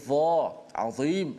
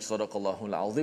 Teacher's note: Kalau kita mengurangkan nipis dha itu, ni banyak berlaku ya. Mengurangkan nipis pada dha yang berbaris di bawah, dia akan menukarkan menjadi huruf zal. Kerana dha dengan zal tu makhrajnya makhraj yang sama, hujung lidah di bawah gigi atas kacip gitu tu. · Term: huruf dha